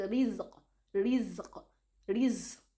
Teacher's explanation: My mouth is even flat while pronouncing it. That is tarqiq.